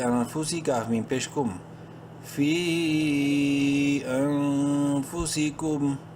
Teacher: حلقی میں سے نہیں ہے، اخفا کریں گے اس نون میں